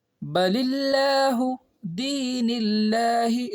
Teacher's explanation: لفظ اللہ کے نام سے پہلے زیر ہے تو یہاں پہ اس کو باریک پڑھیں گے، یعنی منہ گول نہیں کریں گے